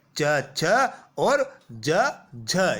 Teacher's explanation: वायु पहले किसी ना किसी मुख अवयव को स्पर्श करेगी फिर रगड़ खाते हुए बाहर निकलेगी स्पर्श संघर्ष यानी नाम से स्पष्ट है इन व्यंजनों के उच्चारण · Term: स्पर्श संघर्षी व्यंजन